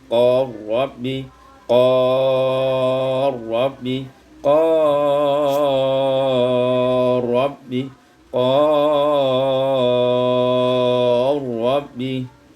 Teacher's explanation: idghamul lam fi ra, ditukarkan lam pada ra, diidghamkan lam pada ra menjadi qal rabbi, qal rabbi, qal rabbi, qal rabbi, yaitu dibaca dengan qasar, tawassut dan isba'.